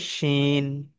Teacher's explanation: জিভের মাঝখানের অংশ আর দুইটো দাঁতের মাড়ির মাঝখানের অংশ একত্রিত ভাবে মিলিয়ে পড়তে হয়